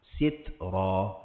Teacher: Ta angin, bukan tambah huruf